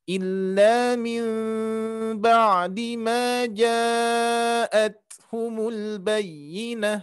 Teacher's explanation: Nah, cuman ditahannya tidak dirapatkan sebagaimana yang pernah disampaikan, ya, sebelum-sebelumnya, bahwa mim mati bertemu ba dan juga mim kecil bertemu ba itu tidak dirapatkan tapi disamarkan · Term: iqlab